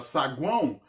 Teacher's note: onde eu tenho uma vogal nasalizada, é um tritongo, um encontro vocálico nasalizado, né, um tritongo nasalizado, saguão.